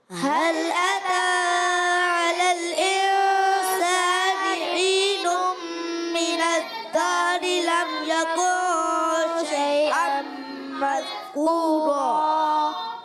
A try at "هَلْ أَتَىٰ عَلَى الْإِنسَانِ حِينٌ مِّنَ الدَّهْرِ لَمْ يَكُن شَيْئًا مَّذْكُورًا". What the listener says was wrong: ماشاء اللہ ایک بچے کی آواز مذکورہ ذال جیسی محسوس ہوئی مذکورہ ذال پڑھنا ہے ذا نہیں پڑھنا یہاں پہ ٹھیک ہے آئیے اب اس آیت کے ہم قواعد سمجھنے کی کوشش کرتے ہیں تو یہ پہلی آیت جو ہم پڑھ رہے ہیں آج سورۃ الدہر کی اس کا پہلا حرف ہے ہا حل ہا ادا ہوتا ہے حلق کے نیچے والے حصے سے یہ یاد رکھنا ہے حمزہ